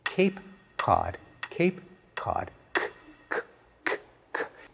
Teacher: In one case, the k is produced way back in the mouth. The other, it's produced much farther forward. · The other, it's produced much farther forward. We don't notice that we pronounce k in two different ways depending on whether it comes before an a or an ah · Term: co-articulation